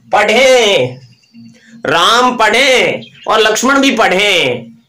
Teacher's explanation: पढ़े नाक से बोलना पड़ता है, अनुस्वार है